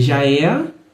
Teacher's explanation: esse é vira um ééé, ele se prolonga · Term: vogais mais longas